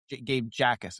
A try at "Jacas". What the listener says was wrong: No, just I think the J is silent. I think it's Akis.